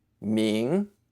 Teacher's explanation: say with a rising tone